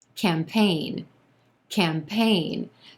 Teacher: two syllables here emphasis on the second syllable and the a is in gray vowel sound campaign that letter g in there doesn't do anything totally silent